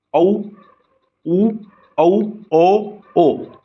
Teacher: चार ये ऐसे स्वर हैं जिनका आकार हमारे मुंह का आकार व्रत की तरह हो जाता है